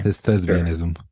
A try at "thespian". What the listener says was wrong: Thespian. Not with a B, with a P. Thespian.